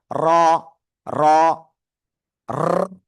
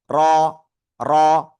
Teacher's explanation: just 1 থেকে 2 বার আপনার বাড়ি খাইবে